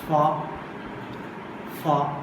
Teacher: The air passes through a narrow passage between two articulators, causing audible friction. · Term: fricatives